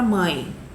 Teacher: É vogal A e o E, né, que tem som de I, vai ser mais fraquinho. Então, esse E vai ser uma semivogal que funciona, que tem som de I, ok?